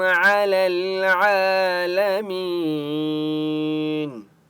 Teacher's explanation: کھڑا زبر ہے، عین کو 1 الف کی مقدار کھینچ کر پڑھیں گے۔ لامی، یا مدہ ہے، میم کو 1 الف کی مقدار کھینچ کر پڑھیں گے۔